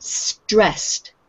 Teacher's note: This word with the double S at the end, the ED sounds like T on the end, so it's stressed.